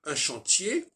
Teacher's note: le R, qui est précédé par un E, fait que le R disparaît